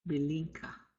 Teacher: We're going to nasalize that second I.